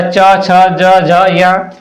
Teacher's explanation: च वर्ग तालव्य है पूरा च छ ज झ य